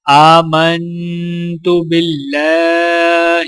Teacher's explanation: ایمان مجمل، آمنت باللہ، حمزے کے اوپر کھڑا زبر ہے، ایک الف کے برابر کھینچ کر پڑھیں گے۔ میم کو نون کے ساتھ ملاتے ہوئے غنہ کیا جائے گا۔ اللہ کے لام کو باریک پڑھا جائے گا اور لام کے اوپر کھڑا زبر ہونے کی وجہ سے ایک الف کے برابر کھینچ کر پڑھا جائے گا۔